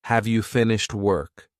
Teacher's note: So the emphasis is on work here, and have is weak.